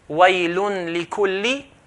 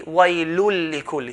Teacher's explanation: Waylun lik will be waylul likulli. So join the tanween into the lam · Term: idgham